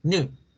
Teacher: La palabra new no se pronuncia new como siempre la han escuchado new, sino es solamente una U.